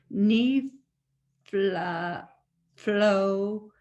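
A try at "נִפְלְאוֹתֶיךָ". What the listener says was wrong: Well, it's not flow, it's le-o. Nifeleotecha. You have to do each one separately. Le-o. There's an O for the olive. Le-o.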